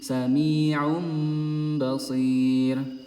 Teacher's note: domah tanwinnya ini melebur menjadi huruf mim